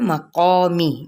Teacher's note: میم کی زیر کو لمبا نہیں کریں گے